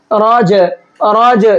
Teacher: راج، راج جو لاسٹ میں ہلکا سا ساؤنڈ نکل رہا ہے، یہ قلقلے کا کہلاتا ہے